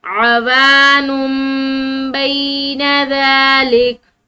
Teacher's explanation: کے اوپر تنوین، نون ساکن ہو یا نون پر تنوین ہو، اس کے بعد اگر با آ جائے تو پھر وہ نون ساکن ہے یا وہ نون کی تنوین ہے تو وہ نون نہیں پڑھا جاتا بلکہ وہ میم پڑھی جاتی ہے